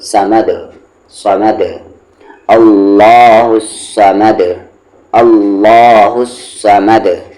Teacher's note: اللہ، اور یہ الف اور لام سائلنٹ ہے، صاد پہ زبر سا، ما کو دام میں مد، سمد، اور یہاں پر رکنے کی وجہ سے دال ساکن ہو گیا ہے تو قلقلہ ہوگا